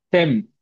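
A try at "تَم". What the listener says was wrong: தெம் அல்ல, தெம். சும்மா தெம், தெ, தெம். தா அல்ல, தம் அல்ல, தெம். ஆ திம் என்று ரொம்ப பணிச்சிடையும் கூடாது. தம் என்று ஆக உயர்த்திடையும் கூடாது. ரெண்டும் பிழை. நடுத்தரமா தெம் என்று சொல்லி வச்சுக்கொண்டா சரியா?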